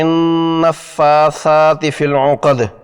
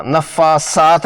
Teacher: را باریک یعنی مرقق زیر کی وجہ سے، نون مشدد پر غنہ ناک کے بانسے یعنی خشوم سے 2 حرکات کی مقدار میں، اور فا اور سا کھڑے زبر کی وجہ سے 2 حرکات میں ادا کرنا ہے۔ حرف سا ذال کی طرح حرف لثویہ ہے، نرمی سے ادا ہونا ہے۔ زبان کی نوک اور سامنے کے دانتوں کے کنارے اس کا مخرج ہیں، اسے سین نہیں پڑھنا، نفاسات نہیں پڑھنا۔